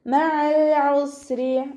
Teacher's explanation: അതിൻ്റെ മഖ്റജ് ശ്രദ്ധിക്കണേ, തൊണ്ടയുടെ മധ്യഭാഗത്തു നിന്നാണ് സൗണ്ടിനെ വ്യക്തമാക്കി കൊടുക്കുക. ഹംസയായി പോവാതെ ശ്രദ്ധിക്കുക.